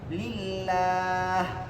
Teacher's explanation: lam jalala didahului harakat kasrah maka dibaca tipis.